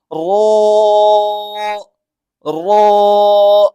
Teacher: आपकी जुबान जो है आगे से हल्की सी ऊपर की तरफ उठेगी और ज्यादा भी नहीं उठानी बल्कि थोड़ा मोटा जैसे पढ़ना है।